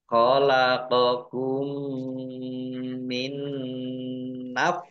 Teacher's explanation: nun sukun bertemu dengan huruf nun. Ini bacaan idgham bi gunnah. Idgham masuk bi dengan gunnah mendengung.